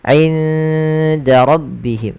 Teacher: Ikhfa'nya samarkan nunnya ke huruf dal. Awalnya inda, tapi dia ketika ketemu dal inda langsung ke huruf dalnya.